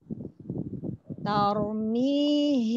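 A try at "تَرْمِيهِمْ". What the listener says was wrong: Jangan to. Dah, jangan tor. Jangan to. Jangan tor. Tar. Jadi ada lengkukan dari tipis ke tebal. Tar.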